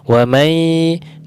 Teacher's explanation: nun sukun bertemu ya, maka didengungkan, disamarkan, dimasukkan ke huruf ya, dilamakan. Wa may tidak ditekan, ditipiskan.